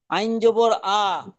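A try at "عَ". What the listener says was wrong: জি মাশাআল্লাহ।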